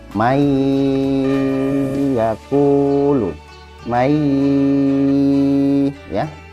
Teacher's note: Cara membacanya, dia dimasukkan. Jadi bacanya tidak man yaqulu, tetapi dimasukkan ke huruf iya-nya. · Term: idgham bi gunnah